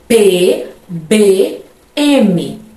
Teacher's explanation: Então, observe que ao soltar o ar do meu pulmão, eu dou uma seguradinha com os dois lábios e só depois que eu solto. Então, a consoante acontece após eu soltar os dois lábios, ó. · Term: oclusivas bilabiais